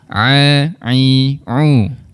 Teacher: Dua huruf ni bunyinya seakan-akan sama tetapi makhrajnya berbeza. Untuk huruf ain di bahagian tengah rongga kerongkong kita perlu ada penekanan sikitlah.